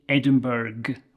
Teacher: people visiting Scotland might say Edinburg with a hard g at the end